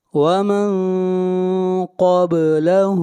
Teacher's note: یہاں پر نون ساکن کے بعد نہ حروف حلقی ہیں، نہ حروف یرملون ہیں، اور نہ حرف اقلاب با ہے، اس لیے اخفا ہوگا · ہا کو کھینچ کر پڑھیں گے 1 الف کے برابر